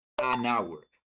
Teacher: Why an hour? Because here the H is silent.